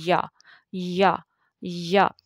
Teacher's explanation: یا زبان اوپر کو اٹھتی ہے درمیان سے، اور پکچر میں آپ کو واضح ہو رہا ہے تو وہاں سے وہ جو حلق کا بیچ میں جو منہ کے اندر جو خالی حصہ تھوڑا سا ہوتا ہے وہاں سے یا کی آواز آتی ہے۔